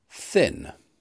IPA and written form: θɪn (thin)